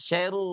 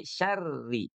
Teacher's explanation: Jadi syarri sama seperti ayat yang sebelumnya di atas itu dia dibacanya tarqit ya dia dibacanya tipis tidak syar tapi syarri